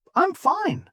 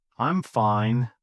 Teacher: Upbeat, cheerful, rising slightly.